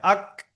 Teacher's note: 5 নম্বর মাকরাজ কাপ। এই জিভের গোড়ায় থেকে একটু সামনের দিকে সরে এসে তার বরাবর উপরের তালুতে লেগে উচ্চারণ হয় আক।